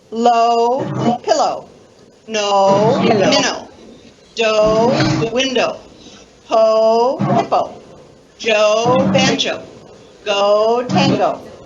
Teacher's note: You have to concentrate on keeping that last syllable very unstressed, right? Very short and very unstressed. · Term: unstressed vowel